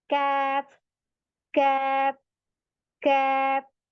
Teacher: ये हमारा कहाँ लगती है जबान, सॉफ्ट और नरम, सॉफ्ट और हार्ड, नरम और सख्त तालु के दरमियान में लग रही है